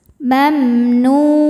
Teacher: ada mim sukun yang tidak menghadapi mim atau ba. Ini menghadapi nun ya. Maka mim sukun dibaca jelas. Mamnu. Nu mad tabi'i zahiri karena ada waw sukun sebelumnya dhammah. · Nu mad tabi'i zahiri karena ada waw sukun sebelumnya dhammah. Cara bacanya panjang 2 harokat.